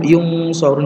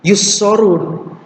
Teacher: kalau ikhfa kalau dengan sod itu kayak seperti ketemu dengan ng